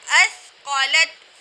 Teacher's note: سا کو ہم نے باریک پڑھا